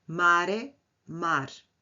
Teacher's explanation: O e final caiu. É uma apócope.